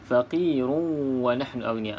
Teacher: Okey, di sini hukumnya idgham ma'al gunnah ataupun idgham bi gunnah. Kita masukkan ke dalam huruf waw berserta dengan gunnah.